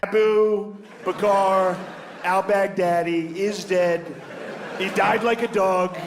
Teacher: it's not extreme but he has somewhat of a breathiness to his voice · he has somewhat of a breathiness to his voice, which basically means that like when I envision his vocal cords, he is not slamming his vocal cords together in any like abusive way. · Trump kind of speaks in this rhythmic, breathy pattern